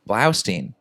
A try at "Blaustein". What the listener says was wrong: It's Stein, right? You said Steen.